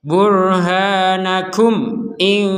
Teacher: yang dibaca dengan jelas itu artinya mim sukunnya itu terbaca sebagai Mim mim sukunnya terbaca sebagai mim jadi tidak seperti dimasukkan atau samar